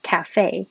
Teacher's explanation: when we say cafe, the stress is on the second syllable, cafe. And latte, we put the stress on the first syllable.